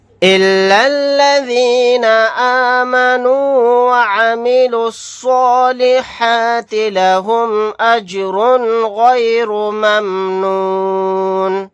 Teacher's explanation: را کے اوپر تنوین ہے تنوین کے بعد غین آ گیا تو یہاں پر اظہار حلقی کا قاعدہ ہوگا